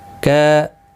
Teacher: اس کے اوپر کھڑی زبر بھی ہے، ایک الف کی مقدار کے برابر کھینچ کر پڑھیں گے. کا الف مدہ ہے، ایک الف کی مقدار کے برابر کھینچ کر پڑھیں گے